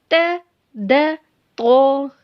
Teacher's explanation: जब जुबान की नोक को ऊपर के दांतों की जड़ से लगाएंगे तो त द तो अदा होते